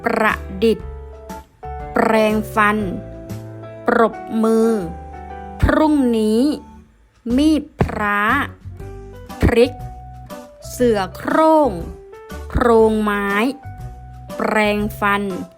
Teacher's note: คำที่มีพยัญชนะต้นจำนวน2ตัวเรียงกันประสมด้วยสระเดียวกันและอ่านออกเสียงพยัญชนะต้นสองตัวพร้อมกัน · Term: คำควบกล้ำแท้